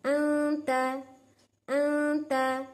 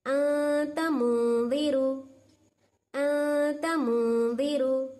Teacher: ये नून की आवाज को नाक में ले ले को चलेगी, नेजल साउंड